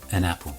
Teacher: the consonant at the end of one word blends in with the vowel sound of the next word